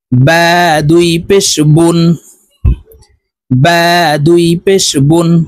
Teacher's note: দুই পেশের উচ্চারণ ঠোঁট গোল করে নুন যুক্তভাবে পড়তে হবে